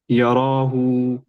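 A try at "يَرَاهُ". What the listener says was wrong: देखिए, रॉ खींचे जा रहा, ये रॉ, हरकत जाके उसमें बद्दा हो गया।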